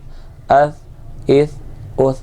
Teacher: اذ اذ اذ، حمزہ ثا زبر اث، حمزہ ثا زیر اث، حمزہ ثا پیش اث، اث اث اث، بغیر سیٹی والے حروف میں سے ہے، سا کے اندر سیٹی نہیں آنی چاہیے، یعنی سا نہیں پڑھیں گے ہم، سا پڑھیں گے۔